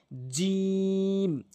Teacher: এরপরে জিম, জিহ্বার মাঝখানের অংশটা ভালো করে বুঝবেন। জিহ্বার মাঝখানের অংশটা উপরের তালুর সঙ্গে